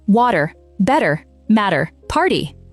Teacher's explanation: The T between 2 vowels turns into a very quick D sound in American English. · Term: flap